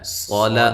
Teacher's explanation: صاد کو موٹا، لام کو باریک